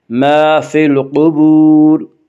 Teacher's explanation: الف مدہ کو 1 الف کے برابر کھینچ کر پڑھیں گے